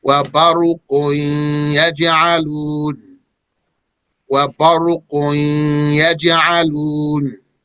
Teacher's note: The ghunna is the attribute of the noon and not the ya. It is preserved as evidence for the noon, which is now gone. It is inserted into the ya.